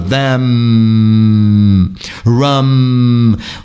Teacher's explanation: seguro com o Lábio fechado them Ram o r ou seja os MS finais eles são sonoros e bilabiais · os M's finais, eles são sonoros e bilabiais. Muito cuidado com isso, porque os nasais em português são abertos. · O M é sempre bilabial mesmo ao final da palavra. Então é mamamamamamamam.